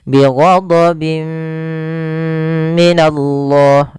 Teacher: Pada dasarnya kita membaca bi ghadabin minallah, karena bertemu mim, tanwinnya dimasukkan, itu yang kita namakan dengan idgham bi gunnah, disertai dengan gunnah masuk ke rongga hidung kita. Bi ghadabim minallah sambil ditahan 2 harokat.